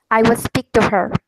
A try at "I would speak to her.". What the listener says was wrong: That is very good.